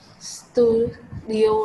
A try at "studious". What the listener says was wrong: Không phải studio đâu. Từ này em đọc là studious, us,